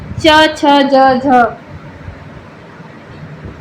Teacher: च, छ, ज, झ, ये ध्वनियां ये पांच कहां से उच्चारित होते हैं? तालु से। तालु से। बोले जाने के कारण इन्हें तालव्य वर्ण कहते हैं।